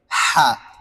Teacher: হা উচ্চারণ করার সময় হলকের মধ্যখান থেকে উচ্চারণ হবে।